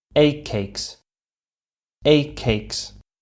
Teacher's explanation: it sounds like a double C Sound the first of which is not released while the second one is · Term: double k sound